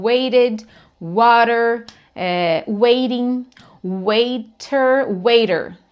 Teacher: Apesar de ser um T escrito ali, o que vem ali no lugar é um som de R de arara. E a maioria das vezes que isso acontece é justamente quando o som do T, o T está posicionado entre o som de duas vogais, tá? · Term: T de R de arara